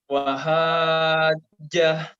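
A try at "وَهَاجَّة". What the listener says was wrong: Panjangkan lagi. Wahajjahu.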